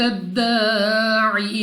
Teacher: عین کو اپنے مخرج سے ادا کیا جائے گا. دال قلقلہ مشدد ہے تو خوب جماؤ کے ساتھ ادا کریں گے. الف سے پہلے زبر الف مدہ 2 سیکنڈ تک لمبا کرنا ہے.